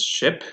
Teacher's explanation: much of tension in your lips or in your tongue and it's unrounded because you don't protrude your lips when you produce it · it is front because your tongue pushes to the front you will see that it is also high because it's your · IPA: [ɪ], /ɪ/